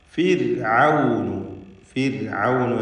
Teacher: ഫിർഔനു എന്ന് റാഇനെ തർക്കീഖ് ചെയ്യണം.